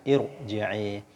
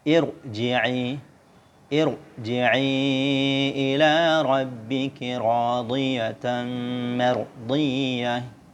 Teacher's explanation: Oke, ini huruf ro, ya, huruf ro sukun asli. Sebelum huruf ro itu ada huruf hamzah wasal. Oke, jadi dibaca tebal.